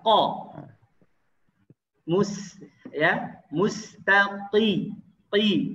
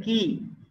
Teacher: Qa agak ke dalam, tebal.